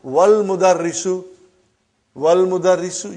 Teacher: you did not pronounce Hamza. Okay? Because it's Hamzatul Wasal.